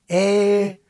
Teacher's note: then the tongue raises and retracts, so from e to ɪ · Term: RP FACE diphthong